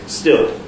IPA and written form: stɪɫ (still)